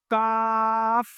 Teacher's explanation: زبان کی جڑ، تالو کا سخت حصہ، یہاں سے ادا ہوتا ہے کاف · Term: حروف لہاویہ